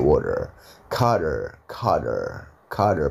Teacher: dia diapit dua suara vokal jadi t-nya diganti D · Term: D tipis